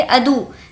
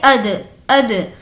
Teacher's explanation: جیسا کہ اگر یہاں پر پیش ہوتا تو ہم کہتے ادو، لیکن اب قلقلہ میں پیش کی آدھی آواز آتی ہے جیسا کہ اد اد.